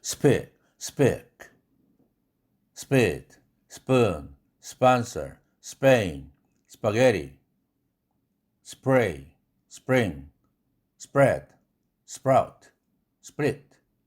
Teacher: 어떻든 침 한 방울 안 튀는 unaspirated다. 기음이 안 쏟아져 나온다. 무기음이다는 사실을 기억하기 바랍니다.